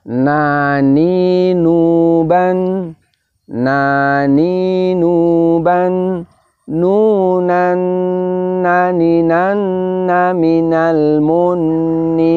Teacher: keluarnya suara dengung dari pangkal hidung karena tertutup saluran suara pada ujung lidah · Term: ghunnah